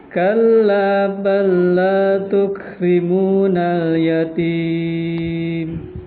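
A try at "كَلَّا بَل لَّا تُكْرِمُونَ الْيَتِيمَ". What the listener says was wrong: Kurang diturun ya. Yatim. Lagi.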